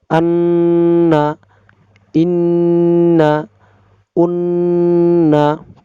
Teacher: 17 number মাখরাজ নাকের বাঁশি হইতে গুন্না উচ্চারিত হয়